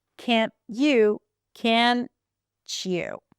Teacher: we have the t and the ya, two distinct sounds, t, ya, and then they become ch. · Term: coalescence